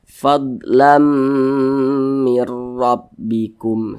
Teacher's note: jadi bunyi tanwin ini masuk ke huruf mim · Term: idgham bunah